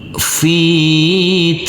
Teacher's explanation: karena kita berhenti di sini kita wakaf di sini maka huruf lam kita baca dengan sukun mati